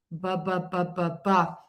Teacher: your voice box is on and vibrating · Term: B sound